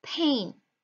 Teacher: predictable variant of a phoneme the phoneme ha has three variants the first variant is the aspirated pa in the word pain · aspirated p in the word pain. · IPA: [pʰ]